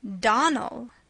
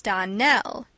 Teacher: the correct pronunciation of our name is Donnell accent on the last syllable